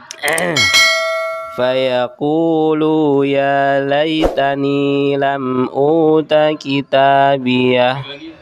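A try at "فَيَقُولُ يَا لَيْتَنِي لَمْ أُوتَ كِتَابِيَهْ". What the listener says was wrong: Hati-hati di kata lu-nya tidak banyak.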